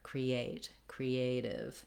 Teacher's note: For creative, the letter E does say the tense E sound here.